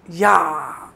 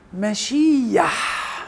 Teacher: فاضافوا بتح ما بين الكسر الطويل والحرف الحلقي. فالبتح ده ساعد في اظهار نطق الحرف الحلقي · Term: حركة غير كاملة